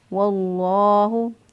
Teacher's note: वाव के ऊपर चूँकि ज़बर है इसलिए लफ्ज़ अल्लाह को पुर पढ़ेंगे, मोटा पढ़ेंगे। वाव जो है या जब लफ्ज़ अल्लाह से पहले वाला हरफ जो है उसके ऊपर ज़बर या पेश हो तो पुर पढ़ते हैं लफ्ज़ अल्लाह को।